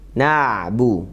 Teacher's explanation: Pas kebetulan di sini ainnya dalam keadaan sukun, maka nun fathah ketemu ain itu ada ainnya mengalir sedikit. Na'bu. Bukan na, tapi na.